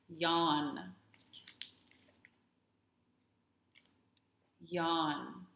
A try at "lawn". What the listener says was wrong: Did you mean yawn? Oh, I didn't hear your singing sound. La, la, la, lawn. Remember to keep your tongue tip up like this. This is how your tongue should be. Your tip of your tongue should be up and behind your front teeth, like this. Lawn.